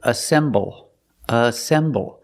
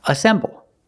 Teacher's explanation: the first word is assemble assemble it's three syllables ass assemble the stress is on the second syllable